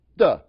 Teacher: one of the hallmarks of the Chicago accent is that the TH sound in the word the is pronounced more like a D.